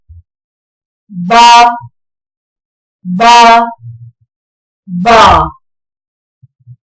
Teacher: با، نرمی کے ساتھ اور ہونٹوں کے گیلے حصے کے ملنے سے ادا ہوتا ہے